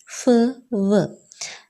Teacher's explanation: Yes. Then labiodental, in which we uses the upper lip and lower teeth